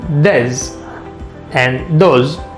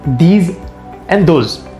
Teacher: saying d for th